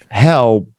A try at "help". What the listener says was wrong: Nah, you got to close your mouth.